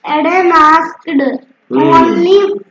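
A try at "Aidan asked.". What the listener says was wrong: अभी एडन आस्क के बाद फुल स्टॉप है ना, फुल स्टॉप के बाद रुकना चाहिए कि नहीं रुकना चाहिए? क्यों तुम आगे बढ़ रहे हो? अगर फुल स्टॉप नहीं होता तो कैपिटल लेटर क्यों होता?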